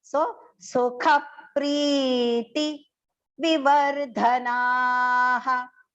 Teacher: The T, V and the va, everything is short pronunciation. Only the last na is long. So the visarga pronunciation also has to go ha.